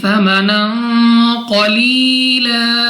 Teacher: یا ساکن سے پہلے زیر، تو یا مدہ کو بھی 2 سیکنڈ تک کھینچ کر پڑھا جائے گا. 2 زبر کی تنوین کے بعد قاف حروف اخفا میں سے ہے، اخفا کا قاعدہ ہے غنہ کر کے پڑھیں گے. یا ساکن سے پہلے زیر، یا مدہ 2 سیکنڈ تک کھینچ کر پڑھنا ہے.